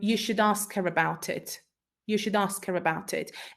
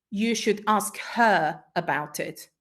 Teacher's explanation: should and her will be um in Weak forms